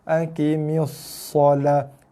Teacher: Tekan pada sod sabdu. Ada bunyi desil sikit. Dia ada sofil juga ni.